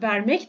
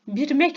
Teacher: Türkiye türkçesindeki V sesleri Özbek türkçesinde B sesine dönüşmüştür